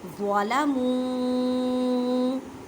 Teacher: ذا کی آواز یا زا کی آواز نہ آئے کیونکہ یہ حروف مثقالیہ یعنی موٹے حروف میں سے ہے. ظَلَمُوا چھوٹی مد ہے وہ مدہ کا قاعدہ اور چار الف کی مقدار میں کھینچ کر پڑھیں.